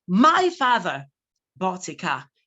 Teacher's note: You stress, you emphasize the word my. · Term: emphatic stress